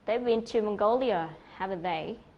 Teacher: Mongolia là cái từ mà được nhấn rõ nhất